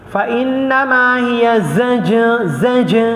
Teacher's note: qalqalah jim. Jangan keluarkan angin banyak sangat.